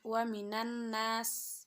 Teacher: Terdapat hukum bacaan alif lam syamsiyah, yaitu apabila huruf alif lam bertemu dengan huruf nun dan membacanya dengan mengidghamkan atau mentasydidkan, dan alif lamnya tidak terbaca meski hurufnya ada